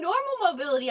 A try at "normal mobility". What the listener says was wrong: That's not one word, that's two words. No, you said normal mobility. Normal mobility. as if it was one. Normal mobility. Space.